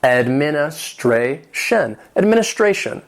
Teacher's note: administration has 5 syllables with the stress on that fourth syllable.